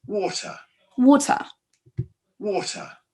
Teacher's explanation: Vous voyez, on n'entend pas le R du tout.